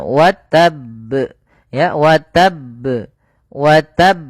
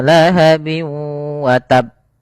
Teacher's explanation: Akan tetapi perlu dipahami di sini karena di sini bnya itu berharakat tasdid maka kita tekan dulu huruf bnya baru dimatikan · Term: qalqalah